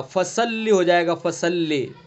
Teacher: اگر صاد کو ہم نے پر نہیں پڑھا، اس کی صفت ہے یہ بلندی، پر ہونا صاد کی. اگر صاد کو ہم نے پر نہیں کیا تو یہ سین بن جائے گا